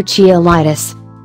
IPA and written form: kaɪˈlaɪtɪs (cheilitis)